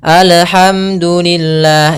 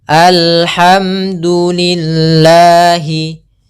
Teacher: Harusnya dia mengalir suara lamnya.